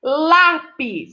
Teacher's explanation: a sílaba lá é mais forte o pis é a última sílaba olá é a penúltima penúltima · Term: sílaba tônica